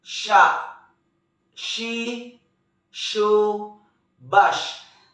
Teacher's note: Huruf sya menyentuhkan tengah lidah dengan langit-langit. Mengalir udaranya dan nafasnya, bahkan kita melafalkan menyebar nafas.